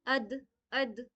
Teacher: यहां पे मद आ गई है। देन यहां पे दाल में कलकला करेंगे।